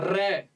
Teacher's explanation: ਕੰਬਵਾ ਵਿਅੰਜਨ ਹੈ। ਕੰਬਵਾ ਕਹਿਣ ਦਾ ਭਾਵ ਕਿ ਇਹਨੂੰ ਬੋਲਦੇ ਸਮੇਂ ਆਪਾਂ ਕੀ ਜੀਭ ਥੋੜੀ ਕੰਬਦੀ ਹੈ। · ਰੈ ਦੇ ਉਚਾਰਨ ਕਰਦੇ ਸਮੇਂ ਜਾਂ ਰਾਰੇ ਦਾ ਉਚਾਰਨ ਕਰਦੇ ਸਮੇਂ ਆਪਣੀ ਜੀਭ ਦੇ ਵਿੱਚ ਕੀ ਹੈ, ਵਾਈਬ੍ਰੇਸ਼ਨ ਹੁੰਦੀ ਹੈਗੀ ਹੈ